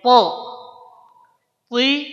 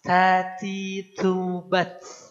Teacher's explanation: Pertama, yang to tidak boleh keluar nafas. Yang ta keluar nafas.